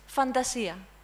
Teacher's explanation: The NT is a dental sound.